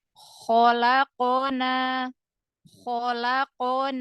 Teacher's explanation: Alif sebelumnya fathah ya huruf mad maka dibaca panjang dua harakat